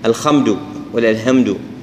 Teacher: الحاء بدلها خاء أو هاء عند غير العرب أو غير المسلمين